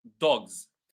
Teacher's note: with the last word dogs, I did not say s, I said z, right? There are some words where the plural s is read as z, like dogs, for example, right?